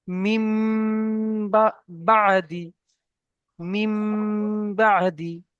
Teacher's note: নুনকে মিমের দ্বারা পরিবর্তন করে এক আলিফ পরিমাণ গুণনা সহ পড়তে হয় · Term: ইকলাবের